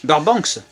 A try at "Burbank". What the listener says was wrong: Il n'y a pas de S à la fin, je pense. Burbank.